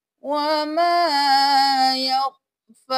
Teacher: یہاں پر وقف کریں گے تو ہم یا خالی ہے اس کو نہیں پڑھیں گے، لیکن کھڑی زبر کو ایک الف کے برابر کھینچتے ہوئے ہم وقف کر دیں گے۔